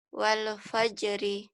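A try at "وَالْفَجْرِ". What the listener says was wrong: wali. Jangan wal. Wal. Jangan ada e-nya ya. Kita mengucapkan wal seperti diputus, seperti ada jeda. Wal fajri.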